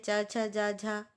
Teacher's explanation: चा वर्ग का जितना भी है, च, छ, जा, झा, यह तालव्य है